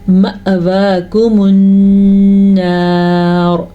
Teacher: نون کے اوپر غنہ کرنا ہے کیونکہ نون پہ شد ہے، اور را پہ ہم رک رہے ہیں تو را موٹی پڑی جائے گی۔